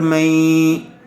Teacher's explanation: نون ساکن کے بعد حروف یرملون میں سے یا آیا ہوا ہے، اس لیے غنّے کے ساتھ ملا کر پڑھیں گے ، اس کو ادغام مع الغنہ کہتے ہیں۔ شین علی مد